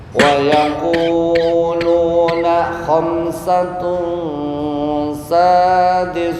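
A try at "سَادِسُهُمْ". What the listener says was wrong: Nah, sadisuhum ini kecampuran nama sa. Ya, ini lepas nih. Khamsatun sadisuhum lepas. Bukan sadisuhum. Sadisuhum sadis.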